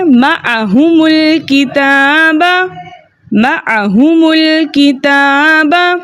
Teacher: حمزۃ الوصل درمیانی کلام میں آنے کی وجہ سے حذف ہو گیا۔ ہم جمع کی میم کو پیش دے کر لام کے ساتھ ملا کر پڑھیں گے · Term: اجتماعی ساکنین فی کلمتین